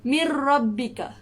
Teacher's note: Kita leburkan huruf nun ni tapi tidak dengung. · Huruf nun tu tak bunyi. Terus masuk ke dalam huruf ra. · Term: idgham bila gunnah